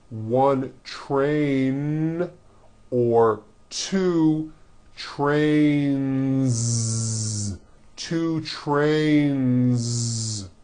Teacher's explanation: Two trains with a voiced Z ending.